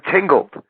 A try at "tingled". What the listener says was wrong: I think you're trying to say tingle, but it sounds like tinkled. That's what it sounds like you're saying there.